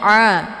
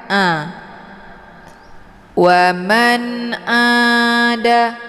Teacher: Ain letak posisinya di tenggorokan bagian tengah Jadi dibacanya a bukan a kalau dibaca a itu bacaan yang